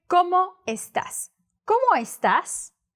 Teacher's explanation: don't try to link the o with the e